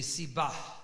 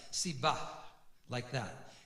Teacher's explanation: the hay has a slight aspiration, but not as much as the het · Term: mapik